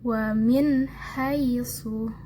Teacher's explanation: Jadi hanya dibaca dengan jelas dan tidak samar serta tidak dengung